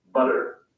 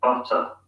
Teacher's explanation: In British English, and again, I must emphasize that I'm talking about the accent referred to as received pronunciation, T sounds are pronounced as hard T's, in other words, voiceless T sounds. In the US, they sometimes sound like an alveolar tap instead of T